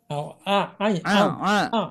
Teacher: Ain ini keluarnya dari tengah-tengah tonggorokan